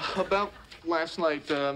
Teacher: we often don't pronounce the T sound at the end of the word about and last